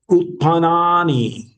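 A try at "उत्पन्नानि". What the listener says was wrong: Utpannani. Dvitva asti. Utpannani.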